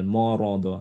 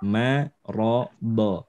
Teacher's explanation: Maksud saya terkena efeknya ro, karena ro itu tebal, dot tebal. Jadi dia mimnya ikut menebal, morodo. Hati-hati morodo, yang benar marodo ya. · Mim tipis, ro tebal, dot tebal